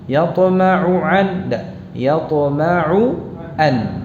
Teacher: Perhatikan ain dan hamzahnya diucapkan masing-masing dengan jelas.